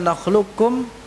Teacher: Nakhluqukum itu nakhlu langsung ke kaf. Tasdidkan kafnya. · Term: idgham kamil